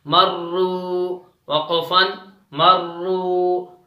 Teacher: را کو موٹا کر کے پڑھیں گے کیونکہ را پر تشدید ہے اور جزم ہے